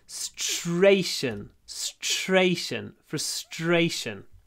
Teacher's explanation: Remember, s t r is s t sh.